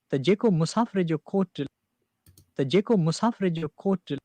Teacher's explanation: we rise up to the accented syllable and then start falling, which is the exact reverse of what we've been talking about in the other languages.